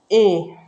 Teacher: कंठ तालव्य, जो कंठ से और तालु दोनों से बोला जाता है।